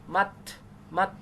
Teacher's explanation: তা সাকিন হামস করতে পারেন